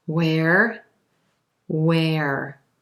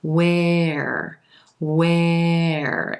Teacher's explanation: AR wher e where where yes these two are true homophones they both have the as in red vowel sound going into the ER